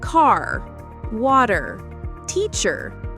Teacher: In American English, we pronounce the R at the end.